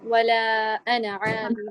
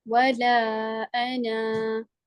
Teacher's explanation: اگر انا پہ وقف نہیں کرتے تو اس کا جو الف ہوتا ہے نا اس کو آپ نہیں پڑھتے